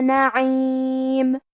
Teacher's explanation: حرف العین کی ادائیگی حلق کے درمیان والے حصے سے ہے، آخری میں میم پہ رکیں گے تو اس پہ جزم سے رکیں گے، لہذا ہم میم کو ظاہر کریں گے۔